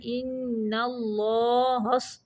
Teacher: ان پہ یہ نون مشدد کا غنہ ہے، اللہ کا لام موٹا پڑھنا ہے